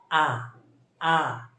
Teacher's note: আ হচ্ছে আমাদের কেন্দ্রীয় বিবৃত, আকে বলা হয় কেন্দ্রীয় বিবৃত।